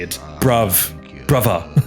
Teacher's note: when you say brother in a thick accent, it's not th, it's v.